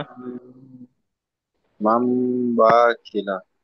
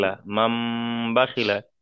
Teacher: হারাকাতে কোনো জায়গায় টান হবে না, তাড়াতাড়ি মাম পড়তে হবে।